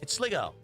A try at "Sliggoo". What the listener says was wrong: Sliggoo. Why would it be go? It has an extra O. It's Sliggoo or Sliggoo. It doesn't matter.